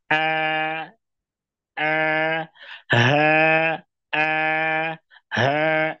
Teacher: Ujung lidahnya sejajar dengan gigi seri bagian bawah, tengahnya datar, pangkalnya datar. · Dan keluarnya dari tenggorokan bagian bawah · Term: hamzah dan ha